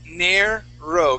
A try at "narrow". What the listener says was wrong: Give me a good R sound. Narrow. Okay, so what you're doing, you're rolling your R. You're saying narrow. Okay, give me an R sound. Nair. So yeah, what you're doing right now, your tongue is hitting the top of your mouth. It's vibrating.